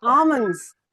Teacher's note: We usually call it almonds but L is silent. It's almonds.